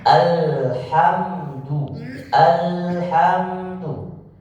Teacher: kita lebih sempurna alhamdu alhamdu Bagaimana cara membaca supaya tidak terpantul tahan di huruf lam sehingga seakan-akan dia punya satu ketukan atau satu harakat alhamdu Nah kenapa harus ditahan Ustaz Kenapa harus ditahan satu harakat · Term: tawassut